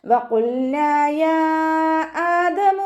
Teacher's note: ഖാഫ് ഇസ്തിഅലാന്റെ ലെറ്ററാണ്, ഉയർത്തി ഉച്ചരിക്കേണ്ട അക്ഷരങ്ങൾപ്പെട്ടതാണ്. അതിനെ ഉയർത്തിയിട്ട് ഉച്ചരിക്കുക.